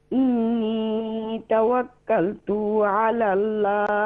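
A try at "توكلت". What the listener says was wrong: توکلت میں جو تا ہے نا، تو نہیں، اس کو شارٹ کریں گے، ایسے کھینچیں گے. توکلت علی اللہ.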